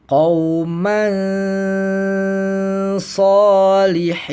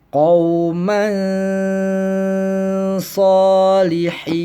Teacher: Nah, di sini tanwinnya di sini atau yang ada di sini yaitu fathatain, berupa fathatain itu dibacanya disamarkan beserta dengung ya. Samar plus dengung kemudian dibaca ditahan seukuran 2 atau 3 ketukan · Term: ikhfa